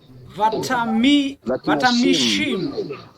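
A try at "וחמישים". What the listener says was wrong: So careful with this. This chet can confuse us as if it was a tav, but it's a chet. Vachamishim.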